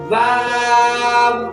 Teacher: واو ادا ہوتا ہے دونوں ہونٹوں کو گول کرنے سے